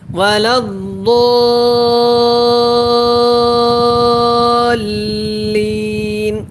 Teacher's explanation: اس ضاد الف کو جو ہے نا اس کے ساتھ ملا کے پڑھنا ہے، اور مد بھی کرنا ہے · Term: مد لازم